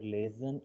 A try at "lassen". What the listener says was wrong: Lassen. Lassen, not lesen. Lassen.